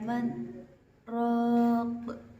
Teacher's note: terdapat bacaan saktah, yaitu berhenti sejenak tanpa bernafas